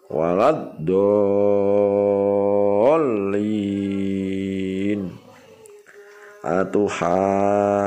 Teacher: Yang dinamakan mad lazim musaqqal kalimi ialah mad bertemu tasdid dalam 1 kalimat dan panjangnya 3 alif.